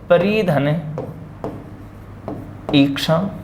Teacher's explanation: परि के अंत में ह्रस्व ई है और ईक्षा के आरंभ में दीर्घ ई है